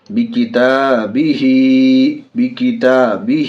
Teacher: ہا کھڑی زیر ہی، ہا میں کھڑی زیر ہے، کھڑی زیر برابر ہے یا مدہ کے، کھڑی زیر کو تھوڑا کھینچ کر پڑھیں گے